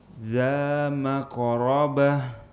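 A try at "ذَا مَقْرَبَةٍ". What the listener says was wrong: Baik, qafnya diusahakan untuk tidak terlalu banyak angin.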